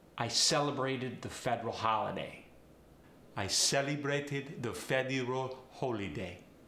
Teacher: the short e like federal or celebrate gets changed to the a sound